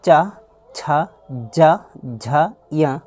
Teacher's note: अगर चा बोलेंगे तो देखिए जीभ ऊपर जाके छत से टकरा रही है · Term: तालु